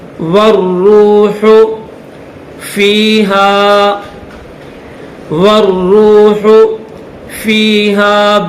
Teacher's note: واو کے بعد یہ الف اور الف کے بعد یہ لام، یہ دونوں نہیں پڑھیں گے. واو کو ڈائریکٹ را کے ساتھ ملائیں گے، پھر را کو واو کے ساتھ ملائیں گے.